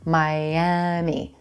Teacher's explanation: notice there's a hidden Y sound at the beginning of that second syllable as we glide between vowels